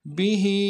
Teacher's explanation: به میں ہاں کے نیچے کھڑی زیر ہے اور مد عارض بھی ہے، دو الف دال میں کھینچیں گے